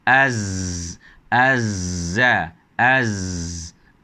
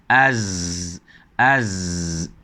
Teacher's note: ada ruang yang sempit sehingga angin boleh melepasi kawasan tersebut dengan getaran